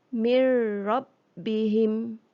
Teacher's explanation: bunyi nun terus masuk di dalam bunyi ra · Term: idgham